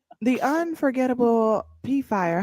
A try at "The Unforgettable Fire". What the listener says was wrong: The P is silent. It's unforgettable.